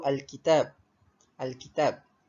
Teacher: Alif lam qamariyah ni dia berlaku kerana tanda sukun pada huruf lam dan diikuti dengan salah satu daripada huruf-huruf al-qamariyah. Cara bacaan bagi alif lam qamariyah ni pula adalah dengan menyebut huruf lam dengan sebutan yang jelas. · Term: Alif Lam Qomariah